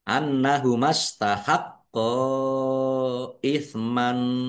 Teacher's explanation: Nun tasdid bacaan ghunah atau dibaca mendengung. Ditahan biar tampak mendengungnya. · Qof-nya ada tasdidnya dibaca dobel, ditekan dan ditahan biar tampak dobelnya.